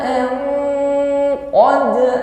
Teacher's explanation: Liya, lama di sini mengucapkan nun sukun berhadapan dengan qaf berarti ikhfa. Mengucapkan an langsung kita samarkan pada huruf qaf sehingga terdapat bunyi eng.